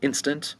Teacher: Instant has 2 syllables. The accent is over the first syllable, instant.